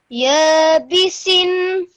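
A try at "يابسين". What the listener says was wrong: Just stretch that nasal sound out for a bit longer at the end.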